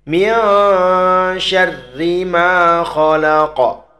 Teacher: Qalqalahnya kita pantulkan dengan qalqalah yang besar atau kubro namanya